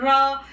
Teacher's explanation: जब र बोलते हो आप तो र तो ऐसे आपको ऐसा लग रहा है कि आपकी जीवा जो है जीभ जो है वो क्या कर रही है? कंपन कर रही है। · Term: प्रकंपित